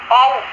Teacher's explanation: इसके उच्चारण में शीघ्रता पूर्वक अ से ओ पर आया जाता है।